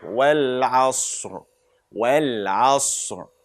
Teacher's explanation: And the ayn, as we said before, from the middle of the throat.